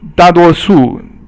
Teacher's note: 大 多 数 or 大 多 数 if you're in the south of China. 大 多 数 da is fourth tone, 多 is 一 声 or first tone, and 数 is also fourth tone